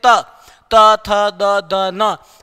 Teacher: हमारी जिह्वा दांतों को ही स्पर्श करती है